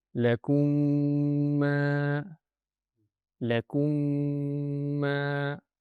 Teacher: Now, when a meem comes after the meem saakinah, that means two meems will merge into one. And that will create a single stressed meem with the shaddah. And that is pronounced with a two-second nasalization sound. · if the meem saakin is followed by another meem, they merge into one meem with a two-count ghunnah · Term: idgham shafawi, Idgham Shafawi